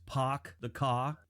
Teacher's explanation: There's no R. They kind of replace the R with an H. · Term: Boston accent